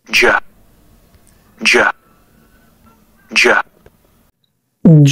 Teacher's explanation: هتحس ان هو كده بيوقف الهواء اللي طالع من الفم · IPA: /dʒ/